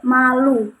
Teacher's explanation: Nah, kata malu ini termasuk dalam proses nasal karena udara yang keluar itu melalui hidung begitu. Jadi ketika kita mengucapkan kata malu itu kayak kita dapat merasakan udara keluar dari hidung kayak malu begitu.